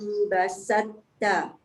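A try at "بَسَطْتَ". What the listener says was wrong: Tak cukup tebal. Tapi bonda tekan tu. Bas tu tak boleh tekan sebab antara ba dengan sin tak ada sabdu. Basal. Basal. Jangan basal.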